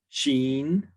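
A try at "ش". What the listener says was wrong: Sheen. Very good.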